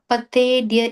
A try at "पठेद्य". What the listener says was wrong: That tha, right, is the second tha in Sanskrit. So pathedya. I think when you are saying, you're saying it like a it there, but it's a ta. Pathedya.